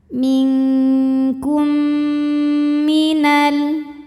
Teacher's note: Minkum, kemudian ada hukum idgham mimi karena mim sukun menghadapi huruf mim. Maka mim pertama dilebur ke mim kedua disertai dengung